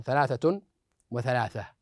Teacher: والتاء المربوطه تنطق هاء ايضا في الوقف